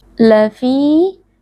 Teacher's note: karena ada Ya Sukun sebelumnya berharakat kasrah dibaca panjang dua harakat